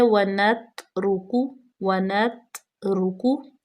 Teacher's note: اس کے بعد ہے وَنَتْرُکُ، وَنَتْرُکُ، واو زبر وا، نون زبر نا، وَنَت، تا ساکن ہے اور تا کے اوپر بالکل مخرج کو جما دیں گے، یہاں پہ قلقلہ پیدا بالکل بھی نہیں کریں گے